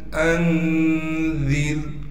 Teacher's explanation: ذا کو باریک کر کے نرم کڑے کے پڑھیں گے، ذال کو آگے را ساکن سے ملا دیں گے۔ را ساکن سے پہلے زیر ہونے کی وجہ سے را باریک پڑھی جائے گی · حمزہ کو نون ساکن سے ملائیں گے، حمزہ نون زبر ان بغیر غنہ کے ملانا ہے